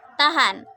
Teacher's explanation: Bunyi H dengan ciri-ciri mati, oral, laringal, frikatif